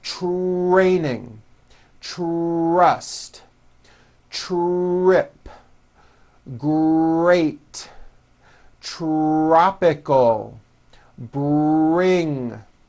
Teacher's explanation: the R sound is the strongest sound of the blend and your lips often come forward before you even say the word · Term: our blends